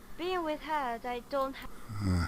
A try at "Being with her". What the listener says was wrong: Again here, being with her. Why is there a D at the end? Being with her.